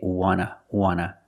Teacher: And we see the T in want is an NT. So we don't pronounce the T